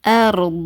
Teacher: அண்ட் நம்மளுடைய நாக்கு இருக்குல்ல நாக்குடைய லாஸ்ட் பகுதி மேல்மோரசை நோக்கி உயரணும் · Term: வல்லினமா